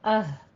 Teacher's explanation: अक्से हलक, यानी हलक का वो हिस्सा जो सीने की तरफ है, उससे हमजा हा निकलते हैं